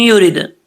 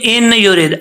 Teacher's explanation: अब यहां पर इदगाम यरमलून हो रहा है, युरिद, अक्सर लोग पढ़ते हैं इन युरिद, ऐसा नहीं करना। जब हमजा को या से मिलाएंगे तो बीच में नून जो है वो गिर जाएगा।